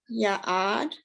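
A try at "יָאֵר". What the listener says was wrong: Oh, that's a hard one because that resh, it's a resh on the end, not dalid, but they look so much.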